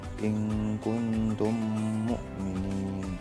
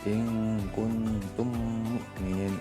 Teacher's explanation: Mimnya yang dua itu kayak jadi satu ditasydidkan. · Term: idgham mimi